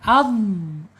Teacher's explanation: Ad suaranya mengalir. Kemudian mempunyai sifat istiala terangkatnya lidah.